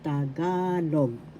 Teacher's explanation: First syllable ta, second syllable ga, third syllable log. The accent is in the second syllable ga, so you pronounce Tagalog.